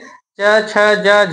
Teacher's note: यानी क ख ग हो गया कंठ से, च छ ज झ हो गया तालु से।